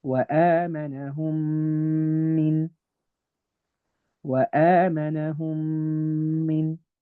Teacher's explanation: Together I will read them as وآمنهم min وآمنهم min. I've merged the two memes together and I've done a ghunna of two counts, two harakat. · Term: labial merging